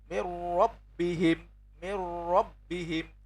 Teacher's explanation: memasukkan tapi tidak ada gunnahnya atau tidak mendengung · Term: bi ghairi gunnah